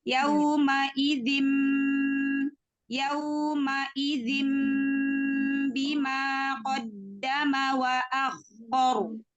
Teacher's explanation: Gunah pada tanwin ketemu ba, gunah pada iklab itu dijelaskan, didorong suaranya.